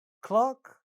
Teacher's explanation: Ka sound in clock also gets aspirated.